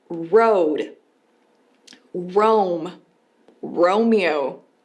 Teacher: o R em inglês tem som de R retrógrado ou retroflexo em português, que é o R do porta, porteira, portão, que em inglês fica como road.